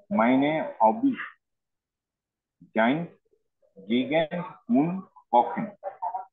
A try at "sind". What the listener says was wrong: আচ্ছা, জাইন হবে না, আসলে জিন্ড হবে।